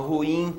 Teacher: Ruim, a última sílaba é tônica. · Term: oxítona